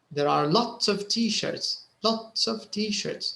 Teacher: lots is stressed t-shirts is stressed there are is not stressed · you can notice that they actually stress the quantifier in this sentence